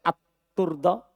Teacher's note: At-turdo diidgham lamnya at-turdo.